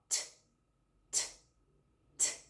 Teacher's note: a sua corda vocal não está vibrando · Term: som da letra T